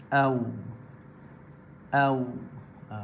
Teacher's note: Itu juga wawlin, au, au. Okey, wawlin tu waw sukun sebelumnya berbaris atas, au. Jadi kena muncung bibir secara terbuka.